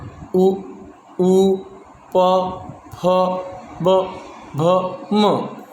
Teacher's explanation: हमारे बोलते समय जो हमारे होठ हैं, ओष्ठ हैं, वो एक दूसरे से टकराते हैं